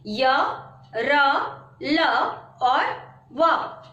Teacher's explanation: इन वर्णों का उच्चारण करते समय जिह्वा मुख के किसी स्थान को स्पर्श नहीं करती है। इसका उच्चारण स्वर तथा व्यंजन का मध्यवर्ती सा होता है, यानी बीच का होता है। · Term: अंतस्थ व्यंजन